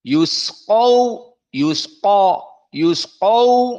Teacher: maka qaf di sini dalam keadaan mufakhamah. Yusqaw, yusqaw, dan ada waw sakinah sebelumnya fathah, maka dalam keadaan madlin 2 harokat.